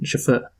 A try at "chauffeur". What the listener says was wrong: the first time you pronounced it right but you got the stress wrong